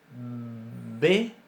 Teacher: La diferencia es que para pronunciar una B, B, yo utilizo acción de las cuerdas vocales antes de pronunciar la consonante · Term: sonora